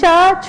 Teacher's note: च से लेकर के ञ तक ये च वर्ग के अंतर्गत आते हैं और ये जहाँ से उसका उच्चारण स्थान जो है वो हमारा तालु है। जब हम च, छ आदि बोलते हैं तो हमारी जीभ तालु को स्पर्श करती है।